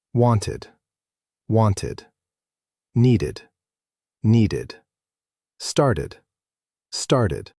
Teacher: And sometimes, only sometimes, ed sounds like id, a full extra sound. This happens after a T or D sound.